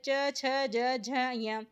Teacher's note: जो च वर्ग होता है उसे हम तालव्य व्यंजन भी बोलते हैं, जिसे कि तालु से बोला जाता है